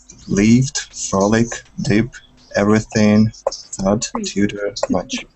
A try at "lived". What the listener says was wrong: You're doing the E sound, but it should be lived. Lived.